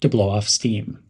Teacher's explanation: emphasize the word steam